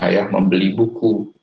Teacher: penekanannya ada pada kata buku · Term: tekanan